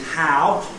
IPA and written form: ˈhaʊ (how)